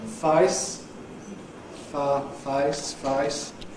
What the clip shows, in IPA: fʌɪs, fʌ, fʌɪs